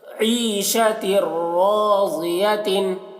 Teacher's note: یہ شین کی آواز یہاں پر ادغام تام ہو رہا ہے, اور را کو پور پڑھ رہے ہیں کیونکہ را مشدد کے اوپر زبر ہے. ضاد کو پور پڑھ رہے ہیں.